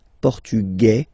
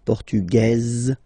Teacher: masculine portug you don't pronounce the s feminine form portuges you pronounce this z sound · it will be only in this z sound the difference between the masculine form and The Feminine form okay masculine portug you don't pronounce the s feminine form portuges